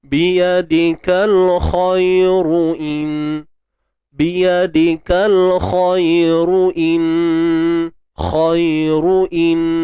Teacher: Bila kita sambung, ra akan dibaca dengan baris depan dan tebal lah.